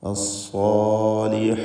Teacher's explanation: സ്വാദ് ഇസ്തിഅലാഇൻ്റെ ഹർഫാണ്, തടിപ്പിച്ച് തഫ്ഖീമോടെ ഉച്ചരിക്കണം. അതിൻ്റെ ദീർഘാക്ഷരമായ അലിഫിലും തഫ്ഖീം ഉണ്ടാവണം.